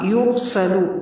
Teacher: را کو پر پڑھنا ہے، سین کو باریک، لام کو لمبا نہیں کیجیے